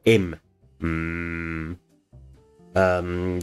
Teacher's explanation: the mouth is completely blocked off and all the air is coming out of the nose